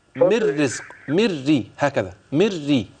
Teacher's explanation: انما من الرزق مافيش فيها غنه